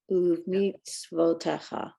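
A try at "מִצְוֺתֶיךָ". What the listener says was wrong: Yeah, that it's above when there's a vowel on the letter before. It's above, not o, it's vo. Mitzvotecha. Mitzvah, mitzvot, mitzvot.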